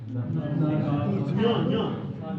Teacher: ञ का उच्चारण स्थान नासिका और तालु है।